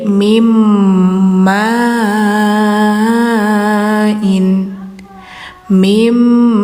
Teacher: Tapi karena setelahnya ada mim, maka suara n-nya enggak dibunyikan lagi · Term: idgam